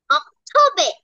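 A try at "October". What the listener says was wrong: অক্টোবে না অক্টোবা বল অক্টোবা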